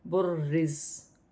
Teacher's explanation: وقف کی صورت میں زبر گر جائے گی اور زا ساکن ہو جائے گی، اور را کو باریک پڑھیں گے، جماؤ کے ساتھ ادا کیا جائے گا۔